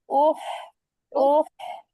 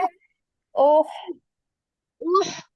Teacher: ব্যথা পেলে যেমন শব্দ করি ওরকম উফ কন্ঠের মধ্য থেকে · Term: হামজা